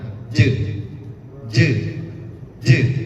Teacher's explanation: sempurnakan dulu sifat huruf jimnya, yaitu qalqalah dengan dipantulkan